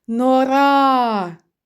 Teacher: наголос падає на звук а другий склад у слові Нора